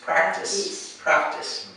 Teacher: This is where the emphasis is on the first syllable, practice.